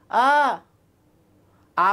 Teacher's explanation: আর যখন আমরা আ বলছি, তাকে মুখটা পুরাই খোলা থাকে, এই জন্য তাকে হচ্ছে বিবৃত।